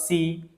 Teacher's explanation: huruf sin adalah huruf yang nipis jadi kita nipiskan sebutan huruf sin. Si macam kita sebut biasa juga si jangan si kabasiti tu dah jadi huruf sad.